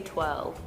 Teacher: England kind of skips over the or sound